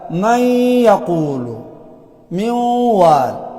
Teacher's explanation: ناقص څه ته وي اثر د حرف مدغمه باقی پاتې شي نو دلته اثر څه پاتې شوی دی غنه پاتې شوی دی